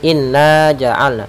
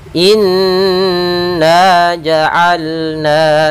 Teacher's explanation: Cara membacanya adalah kita menahan suara n-nya 2 harakat. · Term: gunnah